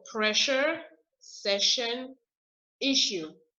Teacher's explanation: if you have two s's next to each other you don't pronounce it s like in french it becomes sh